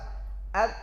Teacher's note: Karena ketika sukun itu posisi ba ini berat. tertahan suara, tertahan nafas. Ab, datang qalqalah meringankan. Ab, pantulkan saja secara tabi'i.